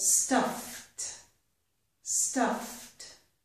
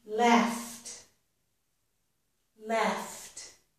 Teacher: When the word ends in the f sound, ed will sound like t.